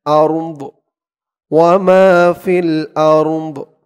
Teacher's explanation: দদের আওয়াজটা লাস্টে একটু ভাসবে